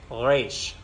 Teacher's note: you start in the back of your throat